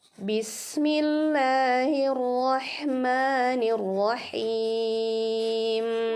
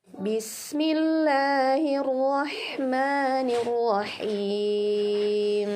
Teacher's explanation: jadi menghadirkan sifat asli huruf mim nya itu ada dengungnya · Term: ghunnah